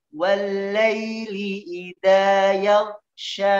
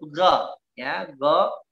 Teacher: dia huruf isti'la, namun dia huruf infitah juga. Jadi suaranya menebal, ya. Bagian pangkal lidahnya katup suaranya membuka, jadi melepas.